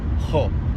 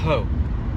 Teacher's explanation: a breathy sound that comes out of the back of your throat